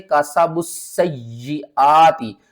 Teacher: اور یہ مد متصل ہے، 5 الف کے برابر کھینچنا ہے